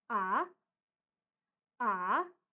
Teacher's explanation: kita baca naik seperti intonasi bertanya dalam bahasa Indonesia